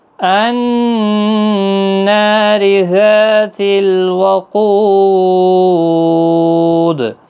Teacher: ذا الف مدہ ہے، قو واو مدہ ہے، اور دال ساکن ہوگا وقف کی صورت میں، قلقلہ کے ساتھ وقف ہوگا، 3 سے 5 الف کی مقدار کے برابر کھینچ کر وقف ہوگا۔